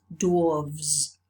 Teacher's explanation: the voiceless one has changed into voiced for the plural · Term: consonant alternation